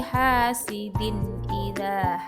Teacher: Hasidin idza, huruf H dan za dibaca panjang 2 harokat atau ketukan. Ini dinamakan mat tobi'i atau mat asli.